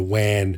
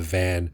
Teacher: the V sound is not there. It's a W sound. Wan, which sort of replaces it.